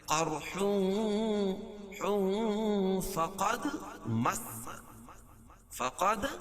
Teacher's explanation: تنوین کے بعد حروف اخفا کے 15 حرف میں سے فا ہے، تو یہاں ناک میں آواز کو چھپا کر پڑھیں گے